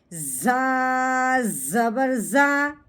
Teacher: زا کی سیٹی کی آواز نکلتی ہے